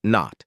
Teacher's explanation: Tongue to alveolar ridge, air out through the nose, voice on.